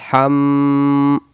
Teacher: মিমের উপরে তাসদিদ গুন্না হবে